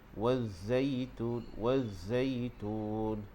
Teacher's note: Dan huruf zai juga kita tekankan sebab ada syaddah. Dan huruf zai ini bacaannya umpama bunyi lebah, jadi bagi dia berdesir.